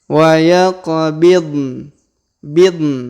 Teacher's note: Huruf qa perhatikan berharokat sukun, maka kita pantulkan atau kita qalqalahkan